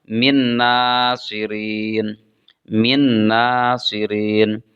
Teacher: Maka nun sukunnya dimasukkan ke dalam nun. Sehingga dibaca min nasirin. · Di sana ada tanwin sukun, kemudian ada nun sukun, kemudian diikuti oleh nun. Maka nun sukunnya dimasukkan ke dalam nun. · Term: idgham